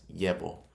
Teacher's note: It's not levo. We're not pronouncing the double L as an L. We're pronouncing it like a Y. Llevo. Like a Y.